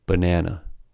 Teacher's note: The vowel of the second syllable is clearly articulated with a, but the vowels of the first and the last syllables are reduced to schwa, resulting in the following pronunciation of the word: banana. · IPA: /ə/